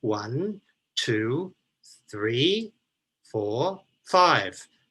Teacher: the list intonation effect that you often get for example when people count in english